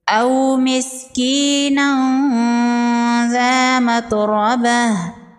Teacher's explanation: تنوین کے بعد حروف اخفا میں سے ذال ہے، یہاں پر اخفا ہوگا، تنوین کی آواز کو ناک میں چھپائیں گے، ذال کو نرمی سے پڑھیں گے۔